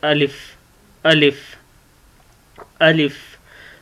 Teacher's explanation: मुंह के जो खाली हिस्सा होता है इसमें से अलिफ अदा होता है। अलिफ ज़बान नीचे से ऊपर को लगती है।